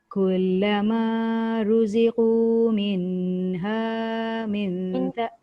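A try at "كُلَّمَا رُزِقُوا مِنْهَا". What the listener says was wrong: Minha tu nun tu tak dengung. Minha min izhar.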